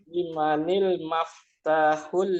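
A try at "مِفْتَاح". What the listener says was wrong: Mi, mi. Bukan ma ya, mi. Jadi harokat mim itu berharokat kasrah. Miftahun, kunci. Bukan ma ya. Limanil miftahu.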